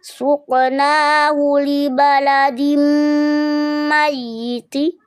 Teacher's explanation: Ingat, ini bukan idgham mimi ya bunda, tapi idgham bigun. Tingkatan gunnah akmal matakun, tingkatan idghamnya kamil.